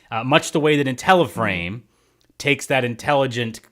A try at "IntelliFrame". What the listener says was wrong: IntelliFrame, not Intella. It's not Intella, it's Intelli.